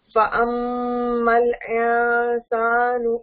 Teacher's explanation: میم کے اوپر تشدید ہے, غنہ کرنا تھا.